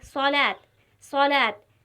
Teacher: اس حرف کو موٹے انداز میں پڑھا جاتا ہے اور اس کا تلفظ زبان کے درمیانی حصے سے نکلتا ہے۔ جب ہم صاد کو ادا کریں گے تو زبان کے درمیانی حصے سے ادا ہوگا، صاد، صاد۔ جیسے یہاں پر لکھا ہوا ہے صلاۃ، جب ہم پڑھتے ہیں صلاۃ، صلاۃ، تو جو صاد ہے وہ زبان کے درمیانی حصے سے ادا ہو رہا ہے، صاد، اور پر پڑھا جا رہا ہے۔